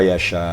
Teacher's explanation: Wajib muttasil, panjang harakatnya, panjang matnya 2,5 alif sampai 3 kalau di akhir ya. Jadi tidak boleh kurang dari 2,5 ya. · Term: mat wajib muttasil